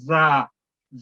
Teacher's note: یہ زا ادا کرتے ہیں یہ تھوڑی سیٹی کی آواز پیدا کرتا ہے